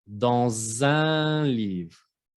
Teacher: Primero se escucha la sílaba dans y luego la segunda sílaba zin. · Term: liaison